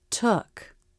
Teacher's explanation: The back of the tongue lifts and the front pulls back a little. In a stressed syllable, the vowel curves up, then down.